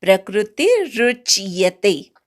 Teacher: इथे प्रला क्रू जोडायचं नाही कारण क्रू हे काही जोडाक्षर नाहीये त्यामुळे प्रवर आघात येत नाही. प्र म्हणायचा पटकन आणि मग क्रू म्हणायचा प्रकृती रुच्यते.